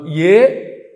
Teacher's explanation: తాలుహు తాలవ్యంతో పలకాలి ఇచ య అందుకే తాలువులు పనిచేస్తూ ఉంటాయి ఏదైతో కంఠతాలుహు ఏ అన్నప్పుడు కంఠము తాలువు రెండు కలిపి పనిచేస్తాయి.